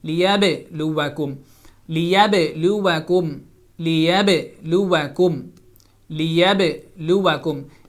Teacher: جیسے الذی خلق الموت والحیات لیبلوکم، لیبلوکم نہیں ہوگا، با کے اوپر سٹک نہیں ہوں گے. جب دونوں ہونٹ ملیں گے تو با کے اوپر آواز سٹک نہیں ہونی چاہیے، رکنی نہیں چاہیے، بلکہ باؤنس ہونی چاہیے. لیب، جیسے یہ دو ہونٹ ملیں گے لیب، تو وہاں پر ملنے کے فوراً بعد اس کو جدا ہونا ہے، فوری طور پہ وہاں پہ باؤنس کرنا ہے اور ایکو ساؤنڈ پیدا کرنی ہے. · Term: قلقلہ